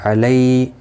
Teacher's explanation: لی یالین ہے، تھوڑا نرمی کے ساتھ کھینچ کر ادا کریں گے، کا کو کھینچنا نہیں.